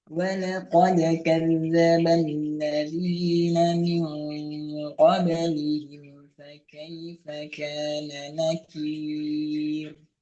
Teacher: pastikan di ujung kir nggak pakai nafas pada ro, sukun palsu